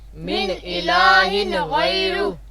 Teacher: یہاں دونوں جگہ پر ہم نے اظہار کر کے پڑھا ہے نون کو، یعنی نون اصلی کو بھی اظہار کر کے ساتھ پڑھا ہے، اور تنوین کے نون کو بھی ہم نے ظاہر کر کے پڑھا ہے.